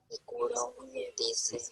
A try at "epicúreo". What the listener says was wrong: No, epicurio. No, no, epicúreo. No epicuro.